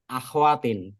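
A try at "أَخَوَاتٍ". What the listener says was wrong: اخواتن مت پڑھا کریں، اخواتن زبر خا پر زبر پڑا کریں.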